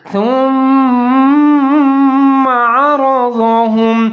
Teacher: گے، یہاں پر آپ نے دو چیزوں کا خیال رکھنا ہے، ایک سا کا خیال رکھنا ہے، اس کو سیٹی نہیں بجانی، سین کی طرح نہیں پڑھنا ، دوسرا میم کے اوپر مشدد ہے، یہاں ادغام کریں گے، · دوسرا میم کے اوپر مشدد ہے، یہاں ادغام کریں گے، غنہ کریں گے ، جیسے ثم عرضهم، عین کا خیال رکھنا ہے، عین کے